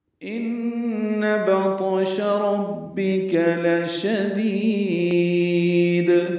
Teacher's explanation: بطش میں طا ساکن ہے، اس پہ قلقلہ ہے · ان میں نون مشدد پہ غنہ ہے